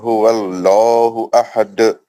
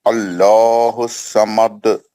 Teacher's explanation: कुल हुवा अल्लाह में लाम जलाला मोटा पढ़ने का है। अहद में खलखल कुबरा है।